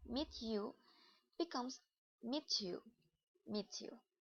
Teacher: when ta and ya together make the cha sound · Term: Assimilation